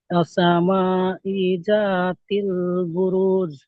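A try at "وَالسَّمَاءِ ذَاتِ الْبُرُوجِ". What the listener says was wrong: রাটা টান দেন, এক আলিফ। এই আলিফ আছে একটা, আলিফ মাদ্দা। বুরুজ। এই লাস্টে জিমটা পরিষ্কার করতে হবে। বুরুজ নয়, বুরুজ।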